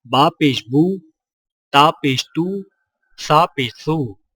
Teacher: سیدھی پیش، حرف کے اوپر واو کی شکل کی مڑی ہوئی لکیر کو سیدھی پیش کہتے ہیں، اور سیدھی پیش ہونٹوں کو گول کر کے بغیر کھینچے اور جھٹکا دیے پڑھا جاتا ہے